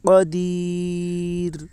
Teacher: یا مدہ کو ایک الف کے برابر کھینچ کر پڑھیں، معروف پڑھیں، مجہول آواز سے بچیں. رائے ساکنہ سے پہلے یا ساکن ہے اس لیے رائے ساکنہ باریک ہوگی.